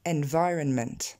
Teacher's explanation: L'accent tombe sur le vi.